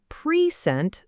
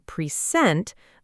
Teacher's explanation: In pre-sent, the first part sounds like pre, but in pre-sent, the first part almost disappears. It becomes a very quick, soft sound.